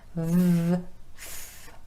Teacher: the V sound and F sounds, both made with the top teeth resting against the bottom lip.